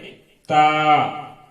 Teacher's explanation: زبان کی نوک اوپر کے دانتوں کے کنارے لگانے سے تا نکلتا ہے اور وہ پتلا نہیں ہوتا ہے.